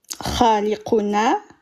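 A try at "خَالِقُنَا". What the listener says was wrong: Voilà, impeccable.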